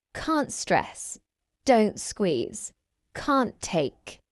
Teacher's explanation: I'm dropping the t at the end of the first word. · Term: dropped the t sound